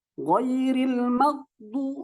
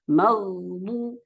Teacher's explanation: Jadi ghainnya itu mati gitu. Sementara ghain itu punya sifat rokhawah, yaitu mengalirnya suara. Ghairil maghdu.